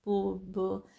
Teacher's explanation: आपके लिप्स जो हैं वो प्रोड्यूस कर रहे होते हैं साउंड्स, पो ब, आपके लिप्स जुड़ते हैं फिर खुलते हैं फिर वो साउंड निकालते हैं